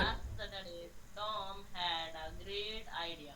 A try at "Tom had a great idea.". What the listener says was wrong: नहीं, फिर से गा के मत बोलो, बहुत अच्छे से पढ़ रहे थे पहले. Tom had a great idea.